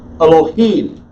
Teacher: the emphasis is on the last syllable